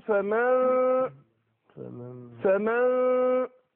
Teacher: يبقى اللي بين الميم والفاء غنه ليس الا مش النون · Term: الاخفاء